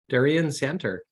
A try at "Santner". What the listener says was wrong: There's another N that's hiding behind the T there, so it's actually Santner.